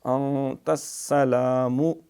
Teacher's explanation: السلام، یہ نون ساکن کے بعد تا اخفا ہوگا، انت السلام، سین چبا کے اچھی طرح سیٹی مارتے ہوئے باریک